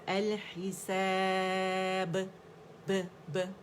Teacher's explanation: اور ہم نے وہی 4 کاؤنٹس مد عارض سکون جو ہے 4 کاؤنٹس ہم نے کیا. با کا باریک سا قلقلہ. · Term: باریک قلقلہ